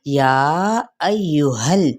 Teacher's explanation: تطبیق: یا ایہا الذین، یا کو ہم نے 4 حرکات لمبا کرنا ہے، ٹھیک ہے، اور حمزہ کی زبر کو ہم نے یا کے ساتھ ملانا ہے اور یا کی پیش کو لمبا نہیں کریں گے۔ یا ایہل، اب ہا کی زبر جو کہ ہم نے اقصی حلق سے ادا کرنا ہے، یعنی سینے کے قریب والے حصے سے